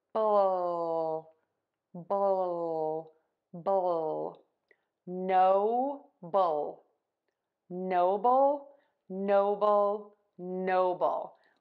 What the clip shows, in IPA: ˈnoʊbəl